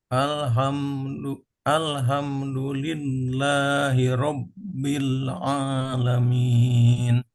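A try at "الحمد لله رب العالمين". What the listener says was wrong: Sedikit huruf H-nya usahakan lebih dari kerongkongan ya, bagian tengah. Jangan sampai mendekati ke bagian pangkal. Biarkan dia keluar desisnya dulu atau nafasnya dulu. Jangan ditahan. Kayak orang habis minum terus kehausan banget terus minum jadinya gitu ya. Alhamdulillahi.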